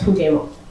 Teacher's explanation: omission, where there's no sound in the word jugemos, would be pronounced as jugemo